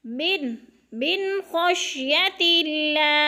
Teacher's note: इधर इख्फा नहीं करेंगे बल्कि इजहार करेंगे, मिन ज़ाहिर करके खौ को पढ़ेंगे